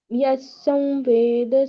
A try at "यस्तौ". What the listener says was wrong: यस्तौ, त का उच्चारण खा गए आप। यस्तौ वेद स वेदवित्।